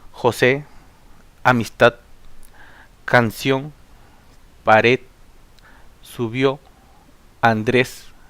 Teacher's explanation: la mayor fuerza de voz está en la última sílaba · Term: palabras agudas